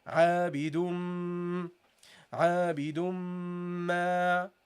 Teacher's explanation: And what you have to take in consideration also is when the meme is doubled, when we have a meme with the shadda, what do? We hold the meme a little bit longer, okay? And we produce a sound which is called al-ghunna from the nasal area.